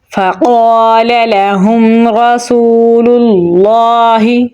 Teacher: کے اوپر جزم ہے، میم ساکن کے بعد را ہے تو یہاں پر اظہار شفوی ہوگا تو میم کی آواز کو ظاہر کر کے پڑھیں گے · ہوگا تو میم کی آواز کو ظاہر کر کے پڑھیں گے، را کو پور یعنی موٹا پڑھیں گے · ہا کو گلے کے نچلے حصے سے نکالیں گے